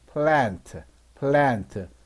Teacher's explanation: 단모음 A니까 애 소리가 나죠